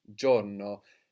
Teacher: sometimes the I in Italian won't be heard that clearly. Like here, we don't really pronounce giorno, but giorno.